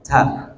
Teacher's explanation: Jadi ta itu mengucapkannya ada napas yang keluar